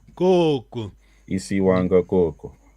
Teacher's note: aquele coco é vogal longa primeira sílaba